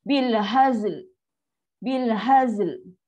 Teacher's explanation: So bila last, automatik lam lidah kita akan terangkat naik ke langit. Ke langit lembut yang ke depan lah, jangan bukan ke tengah langit tu. Ke depan ke area belah gigi kapak tu, atas sikit lah area busi tu, kat situ lah bunyi parking last sekali. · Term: makhraj